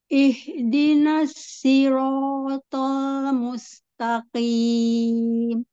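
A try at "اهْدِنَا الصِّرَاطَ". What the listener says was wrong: Yang sod, angkat lagi pangkal lidah. Siro, siro. Sai, sai, bukan ro-nya, sodnya, sod, huruf sodnya yang angkat pangkal lidah. Siro. Enggak, agar diangkat. Pangkal lidah itu dikakukan.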